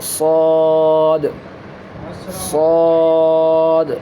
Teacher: یہ حرف مفخم یعنی مستعلیہ لیٹر ہے، جو میں نے بتایا تھا، حروف مستعلیہ 7 لیٹر ہے، ان میں سے ایک صاد لیٹر ہے جو تھک بولڈ اور مفخم کر کے تفخیم کر کے پڑھنا چاہیے اس لیٹر کو، یعنی موٹی آواز میں پڑھنا چاہیے